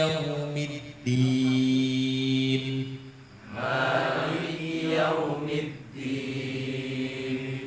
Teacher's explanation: Dal itu ujung lidah bertemu dengan pangkal dua gigi si yang atas koe koe tempatnya tumbuh gigi seri yang atas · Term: huruf Dal